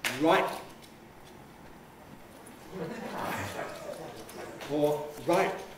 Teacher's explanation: native speakers also reinforce the closure with glottal closure so we don't say exactly right but right or right closure